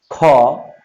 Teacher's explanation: যেমন ধরো, তুমি যদি তোমার হাতের মুখের সামনে হাত নিয়ে বলো ক, দেখো বাতাস হাতে তেমন লাগে নেই বললেই চলে। যদি তুমি বলো খ, তোমার বাতাসের একটা চাপ কিন্তু হাতে তুমি অনুভব করেছো।